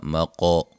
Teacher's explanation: قاف کو موٹا اور قاف پہ قلقلہ بھی کریں گے